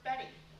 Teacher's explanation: What happens is that your tongue just taps on top of your mouth. It's called a medial flap.